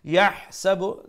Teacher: that's a ha, make sure you pronounce from the middle of the throat